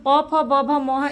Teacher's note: हमारे होंठ आपस में टकराते हैं। तो इसका उच्चारण होठ से होता है।